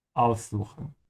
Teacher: Make sure to emphasize the prefix, because it's a separable verb.